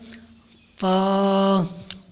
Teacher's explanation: اوپر کے دانتوں کے کنارے اور نچلے ہونٹ کے تر حصے سے ادا ہوتا ہے